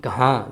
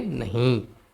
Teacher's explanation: نون غنہ جو آواز ناک سے نکلتی ہو، جس کے تلفظ ناک سے ہوتی ہو